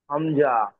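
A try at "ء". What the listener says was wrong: হামজা। এমন ভাবে হামজা বলে যা একটু টান হয়ে যাচ্ছে না, টান হবে না, হামজা বলেন।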